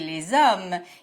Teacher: The final S of les is pronounced here because the noun following les starts with a vowel sound. We call this blending of two words together une liaison.